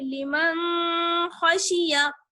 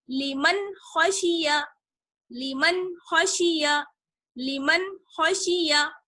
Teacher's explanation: خا حروف حلقی میں سے ہے، اس لیے نون ساکن کی آواز کو صاف یعنی ظاہر کر کے پڑھیں گے